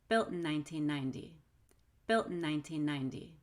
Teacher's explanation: When I have an unstressed syllable with N after the LT, then I'll use the held T.